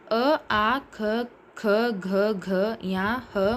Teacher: ಕಂಠದಿಂದ ಹುಟ್ಟುವ ಕಂಠ್ಯ ಅಂತ ಅಂದ್ರೆ ಕಂಠದಿಂದ ಹುಟ್ಟುತ್ತಾ ಆದ್ದರಿಂದ ಕಂಠ್ಯ ವರ್ಣಗಳು ಅಂತ ಅವುಗಳನ್ನ ಕರೀತೀವಿ